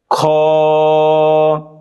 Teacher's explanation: হলকের শেষ হইতে অথবা কণ্ঠনালীর শেষ অংশ থেকে খ উচ্চারিত হয়।